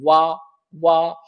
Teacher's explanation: दंतोष्ठम का मतलब दंत और ओष्ठ से। व जब आप व बोलोगे तो होठों का भी प्रयोग होगा और दांतों का भी प्रयोग होगा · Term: वकारस्य दंतोष्ठम